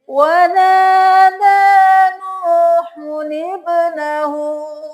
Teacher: अब यहाँ पे हम नूहुब्नहु नहीं करेंगे, हम इस छोटे से नून को भी पढ़ेंगे। नून पेशो नू, हा पेशो नूहु, नून ज़ेर बा निब।